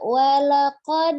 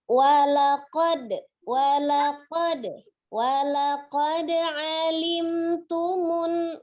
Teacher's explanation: Tapi tadi di walaqad ya, tidak dibaca walaqad gitu ya, seperti harokat, tapi itu hanya dipantulkan saja. Ketika di wasol atau di tengah itu qalqalahnya sifatnya kecil saja, sugro saja ya. Jadi tidak walaqad gitu, tidak, tapi walaqad, walaqad, walaqad alimtumun gitu ya.